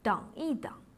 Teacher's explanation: Lorsqu'il est utilisé au milieu d'une duplication de verbes, il se prononce au ton neutre.